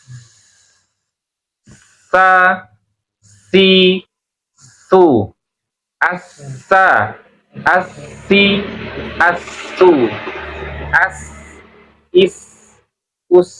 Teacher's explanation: Dari sisi sifat, dia sifatnya itu punya sifat hams, udara keluar ya. Punya sifat juga rohwa, suaranya mengalir.